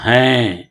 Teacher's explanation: نون غنہ ناک سے پڑھا جائے گا